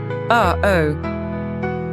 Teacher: It's the little catch in your throat you make when you say, oh. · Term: glottal stop